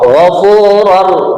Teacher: Di sini ada tanwin ketemu ro, ghafurur. Nah, namanya idgham bila gunnah.